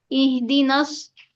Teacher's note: स्वाद हरूफ मुस्तालिया का हरूफ है, इसलिए मोटा भी पढ़ा जाएगा। इहदी नस सिरा, रो अलिफ जबर रो, यहाँ पर रो को पुर पढ़ेंगे।